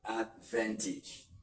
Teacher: You stress the second syllable from the suffix end, which is still what we have in advantage, which is the van.